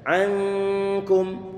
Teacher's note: ditahan suara ikhfa sambil berusaha untuk mendekatkan makhraj huruf kafnya.